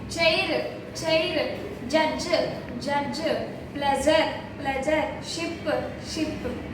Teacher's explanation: tip of the tongue వెళ్లి ఆల్వేలా రిడ్ ని తగలడం ద్వారా ఉచ్చరించినటువంటి సౌండ్స్ ని మనం పెలటో ఆల్వియోల అని అంటాము